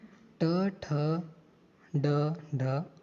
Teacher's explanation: तो मूर्धा से स्वरों में ऋ और ऋ का उच्चारण होता है व्यंजनों में ट वर्ग यानी कि ट ठ ड ढ